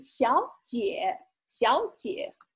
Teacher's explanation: two-third tones back-to-back. So the first third tone sounds like second tone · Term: tone sandy